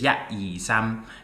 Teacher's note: you have these kind of closed mouth consonants at the end um that were dropped in uh in Mandarin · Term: end stop consonants